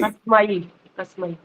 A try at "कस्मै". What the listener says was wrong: माई नहीं बोलना, कस्मई। ऐसे लग रहा है कि माँ आ की मात्रा और ई बोला गया है।